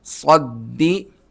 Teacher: صاد کو دال سے ملانا ہے، صاد اسی طرح دانت ملا کر موٹا سیٹی کے ساتھ